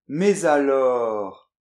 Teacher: Donc, par exemple, la liaison facultative après « mais ». Très souvent, on ne la fait pas. · Et le fait de faire cette liaison, ça donne tout de suite une touche soutenue